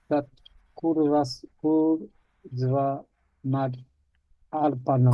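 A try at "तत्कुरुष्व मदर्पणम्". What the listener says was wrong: Kurushva. Kurushva. Kurushva, that's a sh again.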